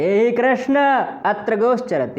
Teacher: यहाँ पर आ और आ में दीर्घ संधि नहीं हुई, कृष्ण में आकार है और अत्र में भी आकार है, दोनों के स्थान पर कृष्णात्र ऐसा होना चाहिए था, पर नहीं हुआ क्योंकि यहाँ पर कृष्ण संबोधन पद है और कृष्ण का आ प्लुत है। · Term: प्लुत स्वर